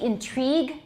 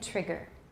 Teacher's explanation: we say intrigue it's long but we say trigger trigger is a short